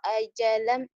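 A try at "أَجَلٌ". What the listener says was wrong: Liyukdo ajalum. Ajalum. Bukan ajalam ya. Kan udah matain. patah tain ajalam. Ini ajalum ya.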